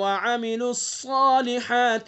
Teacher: صاد کو پر پڑھیں گے حروف مستعلیہ میں سے